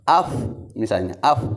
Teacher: kalau sukun di fa harus af, misalnya af, jangan ap, jangan tertutup